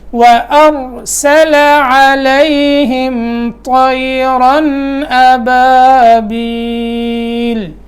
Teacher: حمزہ کے بعد را موٹا ہوگا، سین باریک ہوگا